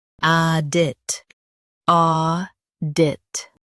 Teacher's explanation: Emphasize or and keep dit quick.